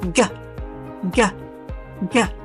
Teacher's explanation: And there is voicing, vibrations from the throat when you say g, g, g. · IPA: /g/